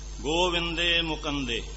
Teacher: ਗੋਬਿੰਦੇ ਗੋਬਿੰਦੇ ਬੋਲੂਗਾ ਕਿਉਂਕਿ ਜਿਹੜੀ ਦੀਰਘ ਮਾਤਰਾ ਹੁੰਦੀ ਹੈ ਉਹਦਾ ਜਿਹੜਾ ਆਵਾਜ਼ ਹੁੰਦੀ ਹੈ ਲਘੂ ਦੀਰਘ ਮਾਤਰਾ ਵਿੱਚ ਲਘੂ ਮਾਤਰਾ ਦੀ ਆਵਾਜ਼ ਹੈ ਜਿਹੜੀ ਲੁਪਤ ਹੋ ਜਾਂਦੀ ਹੈ ਤੇ ਦੀਰਘ ਮਾਤਰਾ ਹੀ ਬੋਲੀ ਜਾਂਦੀ ਹੈ।